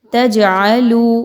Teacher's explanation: تجعلو، یہاں پہ دیکھیں تو جیم پر جزم کا نشان ملے گا آپ کو جو کہ حروف قلقلہ میں سے ہے. جیم کو ہلا کے پڑھیں گے، آواز کو روکنا نہیں ہے یہاں پر بلکہ ہلانا ہے